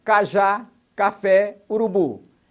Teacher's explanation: As palavras oxítonas têm o som mais forte na última sílaba.